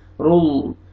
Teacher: لام جلالہ سے پہلے پیش ہے، لام کو اپنے موٹا کر کے پڑھنا ہے